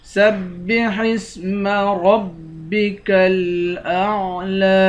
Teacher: آخر میں لام ہے لام کو ایک الف کی مقدار کھینچ کر پڑھیں گے